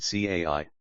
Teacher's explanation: The pinyin c is like the ts in cats, but aspirated